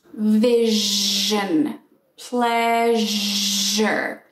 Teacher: go first to the voiceless uh consonant shh and now activate your voice